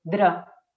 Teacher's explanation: la D sí que es dental, es decir, ya no es exactamente igual que la R, pero está aquí delante, sigue estando aquí.